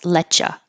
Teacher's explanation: you don't have to you can keep it let you or you can make the connection and change you to ya